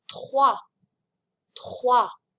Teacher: Last week we talked about this vowel combination, O-I, which does not make an oi sound like it would in English, but rather wa.